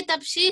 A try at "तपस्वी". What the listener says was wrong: तपसी नहीं, तपस्वी। तपसी नहीं बेटा, तपसी नहीं है, सा पे बड़ी मात्रा नहीं, छोटी मात्रा।